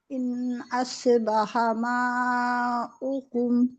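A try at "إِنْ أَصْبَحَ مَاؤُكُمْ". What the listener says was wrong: اس پڑھیے، اس کے بجائے سو پہ قلقلہ کی طرح نہیں ہونا چاہیے بالکل بھی.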